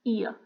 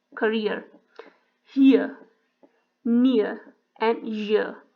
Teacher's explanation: When you say ear, it starts at the front, and then your tongue moves to the center to glide toward a sound, schwa sound.